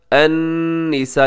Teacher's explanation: अन्निसा यहाँ नून मुशद्दद है, यहाँ गुन्ना कीजिएगा।